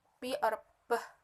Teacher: saat menghasilkan suara pe bibir menyatu dan udara dilepaskan dengan hembusan udara · For example, when producing the sound P, the lips come together and the air releases with a puff of air.